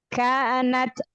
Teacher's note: Maka kalau di akhir taknya disukunkan kasih sifat hamas pada huruf ta ya.